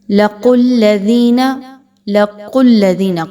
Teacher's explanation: قاف کو خوب موٹا پڑھتے ہوئے اس کے مخرج سے واضح طور پر ادا کرتے ہوئے پڑھنا ہے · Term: موٹی قاف